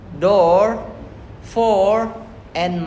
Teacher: Made with rounded lips and the tongue slightly rests at the back. For the O, the long sound.